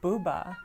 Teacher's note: So when you say the word Bouba, your lips are rounded, your oral cavity is very open.